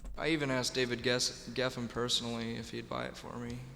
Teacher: His speaking voice, he has a lot of fry, and it's a very relaxed approach. I'm not hearing a lifted soft palate or anything like that.